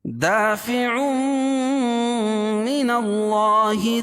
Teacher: ادغام ہوگا لیکن غنہ کے ساتھ، وہاں غنہ کریں گے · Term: ادغام مال غنہ